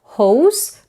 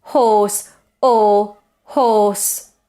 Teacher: This vowel in the word horse, for example, is a very closed O. Notice O, very rounded, and it's steady. It doesn't change.